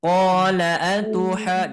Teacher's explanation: Qolanya qafnya 2 harakat, lanya 1 harakat.